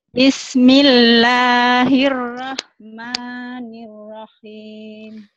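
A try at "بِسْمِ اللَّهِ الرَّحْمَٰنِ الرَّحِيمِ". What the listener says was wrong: Nirrahim. R-nya jangan nggak jelas. Tuh, nirrahim. Hanya satu. Datar. Bukan nirrahim. Nah, jadi nggak boleh Bismillahirrahmanirrahim. Tapi Bismillahirrahmanirrahim.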